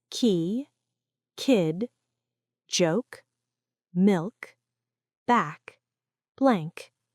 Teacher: This is a strong, voiceless sound, produced at the back of the mouth. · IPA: /k/